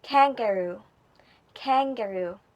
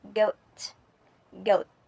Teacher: One sound is sharp and voiceless like a snap and the other is softer and voiced like a growl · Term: k and g sounds